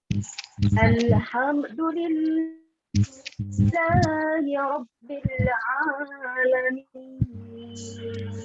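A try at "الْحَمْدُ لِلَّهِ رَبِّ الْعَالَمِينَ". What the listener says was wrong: Iya, tidak alamin, tapi alamin. Kepanjangan ya. 2 harokat tetap berikan 2 harokat. Kalau kita berikan seharusnya 2 harokat, kita berikan lebih. Wow, kebanyakan itu ya. Jangan sampai aturan 2 dibaca 1.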